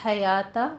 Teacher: وسط حلق سے ہا کو خوبصورت ادا کریں